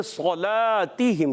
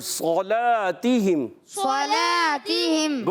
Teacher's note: اچھا ابھی صلاتہم میں صلا لام کو اپنے باریک رکھنا ہے